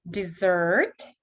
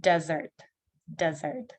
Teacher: И у нас ER не под ударением стало как R.